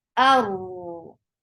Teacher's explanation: For fatha, open your jaws. The sound should be short and attached with ra.